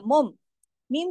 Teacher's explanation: हो गई है, वो मीम मीम पेश मुम हो गया, मुम, मीम की आवाज आखिर में नून से बदलकर मीम में चली गई है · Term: इकलाब